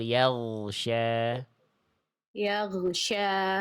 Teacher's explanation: huruf gin itu bunyinya suaranya harus dialirkan ya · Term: gin sukun